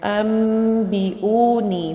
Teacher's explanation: نون کو ہم نے میم میں بدل کے پڑھنا ہے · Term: اقلاب